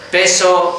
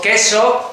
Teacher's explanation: ahí estás cambiando el lugar de articulación, pasas de bilabial a velar, pero los dos sonidos son oclusivos